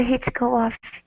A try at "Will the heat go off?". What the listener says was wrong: Okay, so you're still using your lips. You're saying will with an oo sound. It's ol. Use your tongue and the top of your mouth. Will the heat go off?